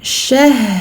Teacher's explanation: Ha porte un soukoun, on se demande dans quelle catégorie de lettres il se trouve au niveau des durées des soukouns. Ici, ha, rakhawa, écoulement total du son. Donc on donne du temps à ce ha, on ne passe pas trop vite.